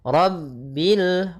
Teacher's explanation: rnya tebal ro tafkhim